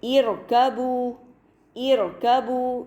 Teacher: ایک اور مثال دیکھیے، ارکبو، ارکبو، یہاں پر تیسرا حرف کاف ہے جس پر کہ فتحہ ہے، لہٰذا حمزۃ الوصل سے ابتدا کی صورت میں اس کو ہم عارضی کسرہ کے ساتھ پڑھیں گے اور رو کو مفخم پڑھا جائے گا کیونکہ رو سے پہلے حمزۃ الوصل ہے جس کو کہ عارضی کسرہ کے ساتھ پڑھا جا رہا ہے۔